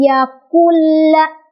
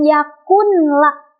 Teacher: kita tidak lagi membaca nun sukunnya secara jelas